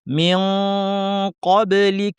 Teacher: জিহ্বার শেষাংশ থেকে কফ উচ্চারিত হয় উপরের তালুতে লাগিয়ে, কাজেই আমরা শেষাংশ তালুতে লাগিয়ে দিব এবং তারপরে নাক থেকে মোটা ভারী গুণনা করব, কারণ কফ ভারী। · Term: ইখফা